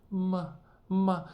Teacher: there's no tone mark because there is no tone it's neutral tone so it's very gentle very elegant